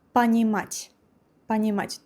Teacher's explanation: the vowel O here, pronounced like A